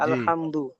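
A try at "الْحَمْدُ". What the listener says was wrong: আচ্ছা, আলহামদু যে পড়লেন, হাম, হাম গুন্না হবে না, হবে না? হাম, এরকম গুন্না হবে কি? কেন গুন্না হবে না? মিম সাকিনের পরে মিম সাকিনের কয়টি কায়দা? মাশাআল্লাহ, মিম সাকিনের 3টি কায়দা। মিম সাকিন কখন গুন্না হবে? যদি মিম সাকিনের পরে কি আসে? আর কি আসলে গুন্না হবে?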